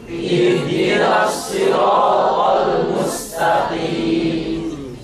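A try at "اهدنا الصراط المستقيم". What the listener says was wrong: Oh, di situ mustaqi, jangan taqi, jangan sampai taqi. Walaupun qaf itu adalah huruf isti'alah tebal, tapi dalam kondisi kasroh dia tebalnya dhaif. Kita titik tekannya di sin ya.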